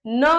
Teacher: आपके नाक से न की आवाज आएगी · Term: नासिक के वर्ण